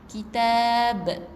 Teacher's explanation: Tapi kita matikan huruf ba ni Jadi kitab. Okey, dengan huruf ba qalqalah. Qalqalah maksudnya ada lantunan b. Okey, kitab.